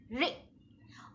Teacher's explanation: जो रि की मात्रा होती है वो, जैसा कि मैंने पहले बताया, ह्रस्व यानी कि छोटा स्वर है रि। इसमें आवाज एक झटके के साथ खत्म हो जाती है और इसमें र के साथ इ जुड़ा हुआ होता है